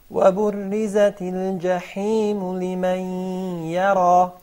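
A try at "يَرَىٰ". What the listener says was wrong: Fatten the ra a little bit more. The ra fell between the ya and the ya, and both are thin. But it is mufakhama. So the first ya will be muraqqaqa, but the ra and the ya will be mufakhama.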